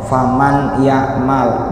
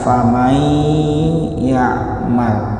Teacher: Cuma idgham di sini menggunakan gunnah alias dengung. Faman bunyi n dilebur ke dalam bunyi ya menjadi famai